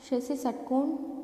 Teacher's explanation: षटकोण मूर्धन्य है, मूर्धा से बोला जाता है।